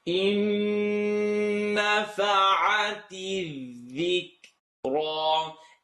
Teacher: Please bring it into your nose as clearly as possible. Bring the noon into your nose.